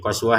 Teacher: Perhatikan t-nya di sini kita baca sebagai ha karena berhenti. Ini yang dikatakan ta yang bulat ya, ta marbutah.